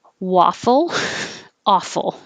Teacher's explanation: these have the same aw full sound the vowel is ah so that was an awful waffle so i maybe i should